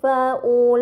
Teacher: Kemudian pada kata faulaika terdapat mad bertemu hamzah bukan dalam satu kata, ini dinamakan mad munfasil, maka harus dibaca panjang selama 4 atau 5 harokat